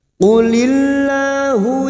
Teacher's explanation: Lam jalalah kita baca tarkik karena sebelumnya ada harokat kasrah